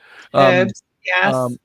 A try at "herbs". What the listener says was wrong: H is silent. The H is silent over here.